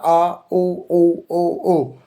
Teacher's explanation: वे स्वर जिनके उच्चारण में जीभ का पिछला भाग ऊपर उठता है उन्हें पश्च भाग कहते हैं। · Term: पश्च स्वर